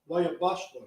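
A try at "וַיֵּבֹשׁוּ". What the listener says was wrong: No, ain't no Y in there.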